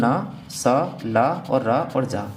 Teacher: जीभ जब मसूड़े पे आगे लगती है तो वर्तस्य की साउंड आती है